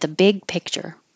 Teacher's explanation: I'm making my T for at in the position for the th and I'm stopping the airf flow at the and then releasing it for theth look at the